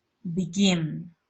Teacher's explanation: Entonces, el estrés va a ir en la segunda sílaba.